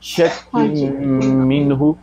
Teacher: ادغام ناقص ہے جب نون کی آواز باقی رہتی ہے. تو یہاں پہ نون کی آواز غنہ کی صورت میں باقی رہے گی. شک منہ, اور ویسے بھی میم مشدد پر غنہ کیا جاتا ہے.